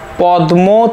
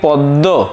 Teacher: ধরো পদ্ম থেকে পদ্ব। এখানে দ আর ম ছিল হয়ে গেল দুটিই দ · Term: সমীভবন